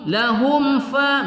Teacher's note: mim sukun bertemu Fa tidak kita dengungkan ya pada izhar syafawi